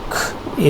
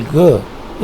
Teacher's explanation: Coming to velar sounds, k is voiceless, while g is voiced.